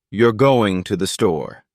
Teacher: if your voice Falls at the end it's just a statement